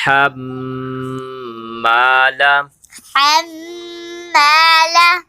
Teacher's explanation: ہا الٹا پیش ہو، ہا الٹا پیش ہو، وامرأتہ، وم وامرأته آگے دیکھیں ہا کے بعد میم ہے، کیونکہ ہا میم سے مل کے پڑھیں گے اور میم کے اوپر تشدید ہے تو میم مشدد ہے، تو لہٰذا میم مشدد پر غنہ ہوگا